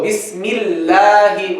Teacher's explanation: So the Lam in the word Allah, if there's kasra before it, you make it light. Bismil. Consequently, the alif will be light.